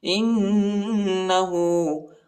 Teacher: حمزہ کو نون کے ساتھ ملائیں گے اور غنہ بھی کریں گے